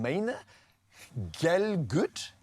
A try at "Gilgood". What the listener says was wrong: Gilgood. But actually, you're pronouncing it like my ancestors. Galgood was the Lithuanian pronunciation.